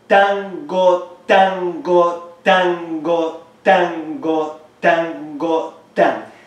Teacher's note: Use the word tango as we are pronouncing it, with an emphasis in tan and the next syllable is so.